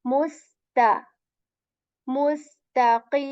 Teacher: seen light letter light and ta letter light, tip of the tongue touches the back of our upper teeth